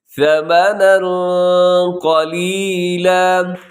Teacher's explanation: یہاں پہ تنوین ہے، تنوین کے بعد قوف، یہاں پہ کریں گے آپ اخفا